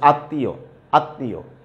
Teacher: এই যে নাকি স্বরে অর্থাৎ চন্দ্রবিন্দু থাকার কারণে আমাকে কি করতে হবে, কিছু বাতাস আমাকে নাক দিয়েও ছেড়ে দিতে হবে, বের করতে হবে। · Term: অনুনাসিক ধ্বনি